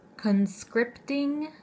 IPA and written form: kənˈskrɪptɪŋ (conscripting)